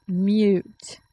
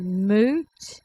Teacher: Mute is spelled M-U-T-E. So that U has the Y sound.